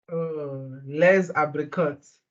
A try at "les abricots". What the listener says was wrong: But we don't read the T, les abricots.